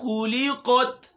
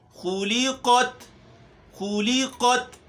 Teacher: خا موٹا پڑھنا ہے، یہاں اس کے اوپر چونکہ پیش بھی ہے تو ہم نے ہونٹ بھی گول کرنے ہیں